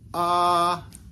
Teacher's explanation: So it's a high tone above the left and the right, and then two A's. And that high tone means that our voice, or our tone really, is going to go a little bit higher as we say this sound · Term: high tone long A